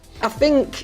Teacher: tends to pronounce the unvoiced TH more like an F sound in words like think and thank.